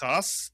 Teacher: If you take a daghesh out of the kaf, it is pronounced the same way that we pronounce the het with the clearing of the throat and therefore we call it a haf.